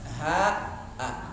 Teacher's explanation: Dari mana makhraj ha? Dari halak, dari tenggorokan. Pangkalnya tenggorokan. Ha sama dengan a.